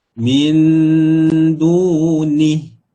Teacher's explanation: dunihi, bila kita waqaf, ha ni kita matikan dia. Min duni. Tu kalau kita waqaf di situ.